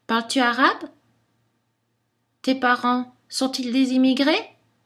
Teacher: On trouve l'intonation qui monte à la fin des questions fermées, aussi appelées questions totales.